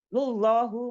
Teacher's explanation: ada lam jalallah ini dibaca tebal karena sebelumnya berharokat domah